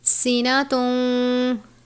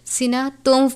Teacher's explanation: سینا تون نہیں پڑھیں گے، سینا توم پڑھیں گے واو کی آواز کے ساتھ